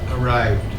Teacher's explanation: You have a trill with your R.